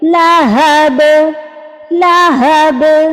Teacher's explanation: آپس میں ہونٹوں کو جوڑا اور فوراً سے کھول دیا، تو یہ لائٹ سا قلقلہ ہوا · 2 زیر کو ڈراپ کریں گے تو یہ با جو ہے ساکن ہو جائے گا، پھر ہم اس پر قلقلہ کریں گے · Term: قلقلہ کبریٰ